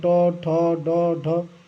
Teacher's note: तो ट वर्ग के जितने भी वर्ड होते हैं, ट, ठ, ड, ढ, ये सब जो है मूर्धा